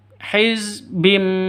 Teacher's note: sifatnya ba itu sama dengan mim ya, sama-sama mingkem karena sama-sama huruf bibir ya. Kullu hizbim bima, tetap dengung dua ketukan.